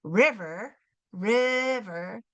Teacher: it's the first syllable that's accented the one that gets the stress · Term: accented syllable